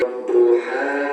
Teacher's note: di sini huruf H harus dibaca panjang, satu alif atau dua harokat